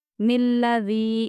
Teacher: ذال کو ہم باریک پڑھیں گے کھینچتے ہوئے کیونکہ یہ حروف مدہ والی یا ہے، اور ذال کو بھی ہم باریک پڑھیں گے۔